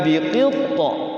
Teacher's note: Sughra. Jadi to-nya itu sukun asli, berarti sughra. Harus dipantulkan.